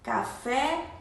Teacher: café tem o som aberto e a sílaba tônica é fé que a sílaba mais forte café né então café eu posso